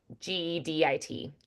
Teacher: sometimes you'll hear the T turned into a D when it's like a really smooth connected flow.